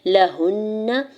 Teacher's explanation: ہا کی پیش کو نون مشدد کے ساتھ ملاتے ہوئے غنہ کرنا ہے اور زبر کو بغیر کھینچے ہوئے ادا کرنا ہے۔